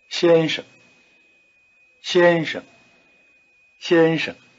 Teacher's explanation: tone the second is in what we call the neutral tone notice that it is weak and short and then it's pitch is rather low